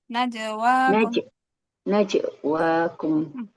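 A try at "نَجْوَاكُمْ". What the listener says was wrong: Kalau disambung bu, enggak putus najwa bukan, enggak putus. Najwa, najwa, najwa kok, najwa Soalnya kalau putus itu kita nambah huruf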